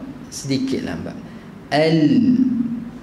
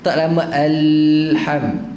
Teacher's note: Satu lagi huruf lam ni dia bainiyah, sifat bainiyah ataupun tawassut. Dia ada sedikit lambat